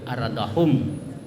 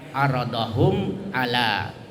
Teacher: Jadi Jadi apabila ada mim sukun bertemu dengan salah satu huruf hijaiyah selain ba dan mim, ya, cara membacanya itu jelas mimnya dengan mulut tertutup, aradahum. Asyafawi itu artinya bibir atas dan bawah ketemu sehingga mulut tertutup. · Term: al-izhar asy-syafawi